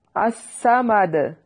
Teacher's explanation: اس میں صاد کو ہم نے خوب موٹا کر کے پڑھنا ہے، اس کے اوپر شد ہے۔